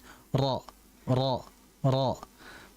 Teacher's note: ketika kita mengucapkan huruf ro, ro sekali sentuhan itu ada dua getaran.